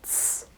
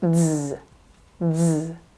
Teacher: The first pronunciation is ts, no voicing, ts, no vibration. And the second is z, z.